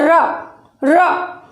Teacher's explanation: रा को जब आप बोलते हैं र, तो इस रा का उच्चारण करते हुए हमारी जीभ जो है, हमारी मूर्धा जिह्वा हमारी घर्षण करते हुए निकलती है, और घर्षण के साथ में ही लुढ़कती भी है। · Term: लुंठित वर्ण